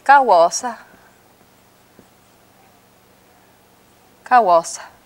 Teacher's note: You don't say kawasa, you say kawasa. So you just sort of whisper on that last syllable. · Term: whispered, whispered vowels